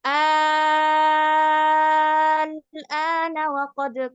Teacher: Tadinya 2 harokat aja. Tapi ternyata setelahnya itu ada huruf yang sukun, yaitu lam. Jadi nggak jadi 2 harokat, jadinya 6 harokat.